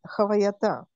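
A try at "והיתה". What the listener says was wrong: только тут нет хета, а эй, авая-то.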